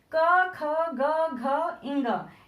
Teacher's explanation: कंठ से बोलते हैं जो कि का वर्ग में आता है